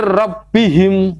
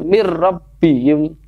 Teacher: Nunnya kita seakan-akan kita hilangkan, langsung kita masuk ke ra gitu ya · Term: idgham bila gunnah